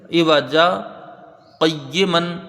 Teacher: اسی سانس سے پڑھا جائے آواز کو تھوڑا روک کے تو وہ سکتہ ہوگا، اور اگر سانس ٹوٹ جائے تو وہ وقف ہو جائے گا۔